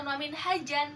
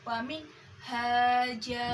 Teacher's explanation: Ada tanwin fathah bertemu dengan alif dan diwakofkan, dibacanya bukan wamin hajan tetapi wamin haja